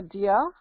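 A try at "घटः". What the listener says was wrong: No, not dia. G-H, gha. Ghata.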